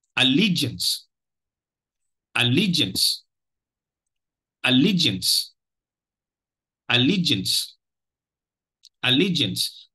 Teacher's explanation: the second syllable carries the stress so that is the primary stress syllable